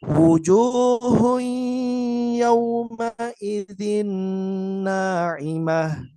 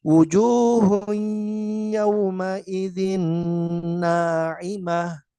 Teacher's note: Ingat ini dibaca dengan gunah artinya dengan mengeluarkan suara hidung. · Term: idgham bighunah